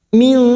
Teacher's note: Auna min, nun sukun bertemu dal ikhfa hakiki, kita samarkan bunyi nun sukun dan mendengung selama 3 harakat